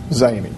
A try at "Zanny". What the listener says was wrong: Pronunciation, sir, is Zanny. Instead of Zenny to what you're saying.